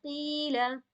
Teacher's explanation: پھر اسی طرح قاف یا زر قی، یا مد سے پہلے زیر آ گئی ہے تو اسے بھی کھینچی جائے گی